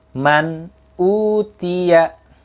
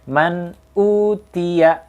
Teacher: disitu ada nun mati bertemu dengan alif disitu dibacanya jelas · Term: idzhar halqi